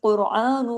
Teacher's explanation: हाजल कुरआन, कुरआन, कॉफ भी heavy, रॉ भी heavy, क्यों? पेश की वजह से।